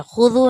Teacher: نے، ذال کے ساتھ واو ہے تو اس لیے اس کو واو مدہ ہے تو اس کو تھوڑا سا ہم نے کھینچ کر پڑھنا ہے